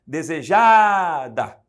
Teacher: Sílaba tônica é a penúltima, a palavra é paroxítona.